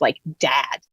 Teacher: all the other words like Dad are shifting to be farther down in the vowel space